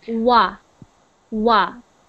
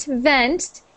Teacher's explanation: when it's a W, the sound is made by your lips only, no teeth, like this.